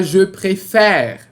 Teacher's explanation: Você pode ver que esse segundo E é aberto. Por isso, a gente tem que trocar o sentido do acento.